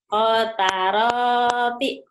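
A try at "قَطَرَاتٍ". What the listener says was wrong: Nggak ada yang panjang. Kota roti.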